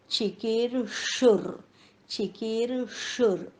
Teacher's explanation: पोटफोड्या श, जीभ टाळूकडे जाईल